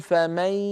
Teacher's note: انطق صوتين معا ياء من الفم وغنه من الخيشوم ولا يطغى احدهم على الاخر